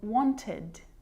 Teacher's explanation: you can hear the e d sound there it is it's its own syllable